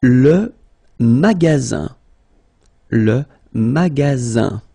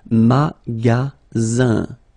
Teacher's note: you've got only one S between two vowels. Then you get the sound Z, alright? And then the ending here is I-N, so it's nasal, goes in your nose, and it's un.